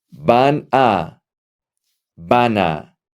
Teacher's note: You connect the N and the A.